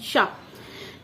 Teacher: जब मैं छोटी थी तो जब मैं पढ़ती थी, पता नहीं मैंने कहाँ पढ़ लिया था, तो मैं इस शा शलजम वाले शा को मैं शुरू से ही तालव्य शा कहती हूँ, तालव्य शा, तालव्य वाला शा, तालव्य शा है ना, तालव्य शा। तो श जो है शलजम वाला, ध्वनि का उच्चारण कौन सा स्थान है, तालव्य।